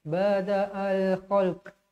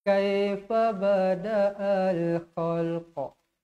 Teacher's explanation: Huruf kat situ huruf qaf, huruf qalqalah. Macam ada lantunan.